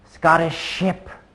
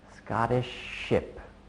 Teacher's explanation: Instead of pushing the air out continuously like Scottish ship, I just pause very briefly.